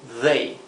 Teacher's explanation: they es aquí lo he escrito con dh para para imitar la th inglesa que sería they parecido una d Pero vibrante